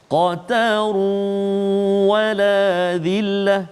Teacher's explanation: Qataru wala dhillah, kan? Masukkan bunyi tanwin itu ke dalam waw beserta dengan dengung